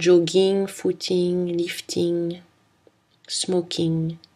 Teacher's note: Pour le son ng, c'est une consonne nasale, vélaire et voisée.